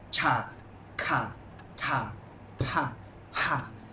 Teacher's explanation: So for the last 5 consonants, they have a strong 4th tone.